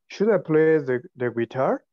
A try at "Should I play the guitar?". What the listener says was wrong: Guys, don't make the intonation of a question. Should I play the guitar? No. Should I play the guitar? No, the intonation is like a normal sentence. Should I play the guitar?